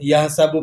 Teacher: یہ ہا حلق والی ہا ہے، اسے حلق کے بیچوں بیچ سے ادا کیا جائے گا